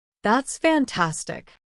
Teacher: Show excitement with a strong rising-falling intonation.